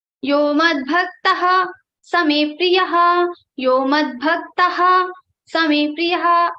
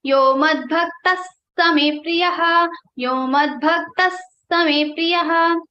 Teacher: Visarga is followed by sa, so sa will come here and it will become Yo madbhaktas same priyaha.